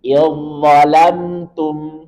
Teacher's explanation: Kemudian contoh berikutnya, za ketemu dengan dha. Sama makhraj berbeda sifat. Maka langsung leburkan atau idghamkan ke dha.